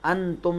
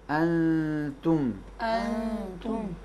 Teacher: نون کو تے میں چھپائیں گے